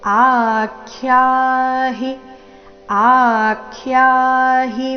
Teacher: ದೀರ್ಘ ಸ್ವರಾಕ್ಷರ ಆ ದಿಂದ ಆ ದೀರ್ಘ ಹೇಳಿ ಅದರ ಮೇಲೆ ಆಘಾತ ಬರಬೇಕು